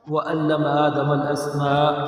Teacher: اسماء پہ مد متصل ہے، اس کو کھینچ کر پڑھنا ہے